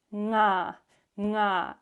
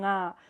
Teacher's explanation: here I is a low tone, nga, which means it vibrates more the sound in the throat. If you put your fingers here, nga, you will feel a vibration.